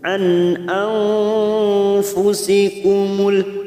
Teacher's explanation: nun sukun bertemu fa, ikfa hakiki, kita samarkan 3 harokat